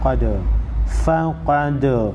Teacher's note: قاف حروف مستعلیہ میں سے ہے موٹا پڑھیں گے